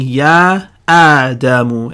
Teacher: We've been saying Ya Adamu, and so you hear that Hamza. I'm making the sound of the Hamza, and nothing is silent, nothing gets blended. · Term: Hamzatul Qat'